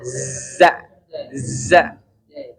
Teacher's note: ini punggung lidah kita nggak nempel ya Pak. Justru malah ujung lidah kita di antara gigi atas gigi bawah. Za. Coba sama-sama Pak. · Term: huruf zai